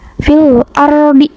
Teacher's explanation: Terus huruf ro-nya ini dibaca dengan tebal atau takhim.